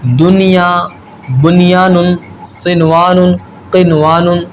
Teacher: بلکہ ہم کیا کریں گے، یہاں اظہار مطلق کریں گے، یعنی ایک کلمہ میں آنے کی وجہ سے ہم یہاں غنہ نہیں کریں گے، بلکہ اظہار مطلق کریں گے